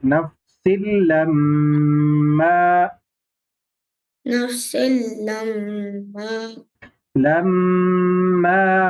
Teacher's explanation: سین کو لام میں ادغام کر کے پڑھنا ہے